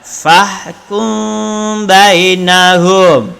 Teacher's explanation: Fahkum, mim mati bertemu dengan ba. Jadi bibir tidak boleh rapat. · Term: mim tidak rapat